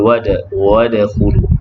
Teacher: dal yang sukun qalqalah sughra berdetak kecil